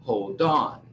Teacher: O D, ou seja, a consoante, normalmente pula para a próxima palavra e se une, se separando da outra palavra. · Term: linking words